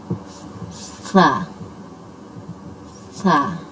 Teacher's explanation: सीटी की आवाज़ बिल्कुल नहीं आनी चाहिए